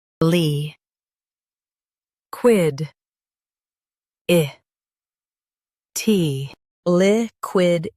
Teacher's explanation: Stress quid and keep itty light.